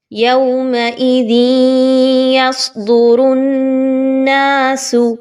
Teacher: یومئذ یصدر الناس، نون مشدد ہے تو را اور نون ان دونوں کو مضبوطی کے ساتھ ملائیں گے۔ را کے اوپر چونکہ پیش ہے اس وجہ سے اس را کو پر پڑھا جائے گا، باریک نہیں پڑھنا